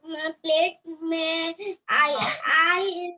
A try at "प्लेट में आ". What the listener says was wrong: प्लेट में आई नहीं है बेटा, ई तो है ही नहीं, पीछे केवल आ है ना, केवल आ है।